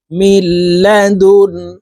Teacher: নুন সেকেনের পরে বেলাগুনার হরফ লাম এই কারণে এই মিম তাশদি লামের সাথে গুন্না ছাড়া মিলাইয়া পড়বো